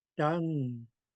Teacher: Each time I hit those two tone marks, I could feel slight reverberation in my mouth because I'm doing high tone.